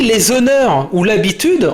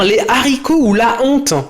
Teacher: en faisant une pause et en prononçant le H aspiré